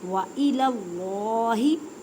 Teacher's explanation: وَإِلَى اللَّهِ اللہ کے لفظ کو پر پڑھیں کیونکہ اللہ کے لفظ سے پہلے زبر یا پیش آ جائے تو اللہ کے لفظ کو پر پڑھتے ہیں، موٹا کر کے پڑھتے ہیں